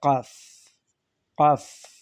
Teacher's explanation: কাফ কণ্ঠনালী শেষ সীমানা থেকে উচ্চারিত হয়